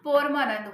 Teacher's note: लिखते परमानंद है लेकिन बोलते पोरमानंद है